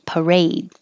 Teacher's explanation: the stress is on the second syllable, A, parade.